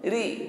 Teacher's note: huruf ra yang berharokat i kasrah, maka pengucapannya diringankan